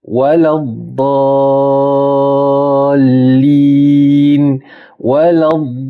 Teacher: Terlalu ramai yang sebut dad ni menjadi d ataupun dal. Rahsianya tepi lidah kita ni mesti sentuh kepada gigi gerahang kita ni di kanan ataupun di kiri bukan di hujung lidah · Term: huruf dad, huruf Dad